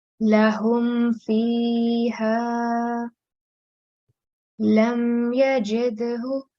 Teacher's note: the sound of Mim Sakin will be pronounced clearly for 1 second or 1 count if any letter other than Mim or Ba appears next to it.